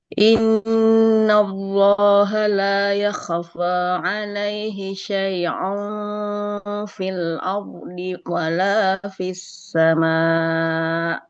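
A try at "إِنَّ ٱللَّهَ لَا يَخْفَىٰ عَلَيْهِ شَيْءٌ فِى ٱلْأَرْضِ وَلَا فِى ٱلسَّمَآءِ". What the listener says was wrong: Diulangi sekali lagi dalam pengucapan huruf hamzahnya jangan seperti ain ya.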